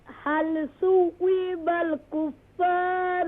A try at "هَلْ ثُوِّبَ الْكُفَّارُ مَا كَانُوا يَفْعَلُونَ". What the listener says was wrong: ثُوِّبَ is wrong. Don't stretch the واو. هل ثُوِّبَ